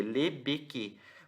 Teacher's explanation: as pessoas pronunciam como um E cheio, uma vogal aberta, cheia.